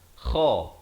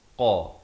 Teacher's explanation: kha di hujung kerongkong, qaf di pangkal lidah